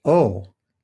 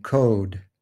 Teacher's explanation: The mid back lax rounded vowel is ah, as in law. The mid back tense rounded vowel is o, as in code.